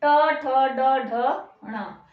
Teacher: ठीक है, फिर है मूर्धन्य, मूर्धन्य ट ठ, जीभ कहाँ लग रही है? जो दांतों के पीछे थोड़ा सा कठोर भाग है, वहां पर लग रही है, ट ठ ड ढ ण।